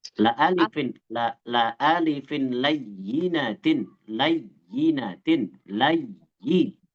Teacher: Ya-nya di situ ya musyaddadah, ya yang ditasdidkan, maka dihentak saja, dinaber gitu.